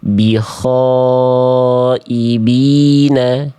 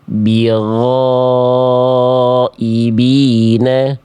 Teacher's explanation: Alasannya kenapa yang A bukan eh tidak tepat, bahkan salah besar, karena yang A itu ghain-nya bocor nafasnya, mengalir udaranya sehingga yang keluar adalah bukan ghain lagi tapi sudah berubah menjadi kho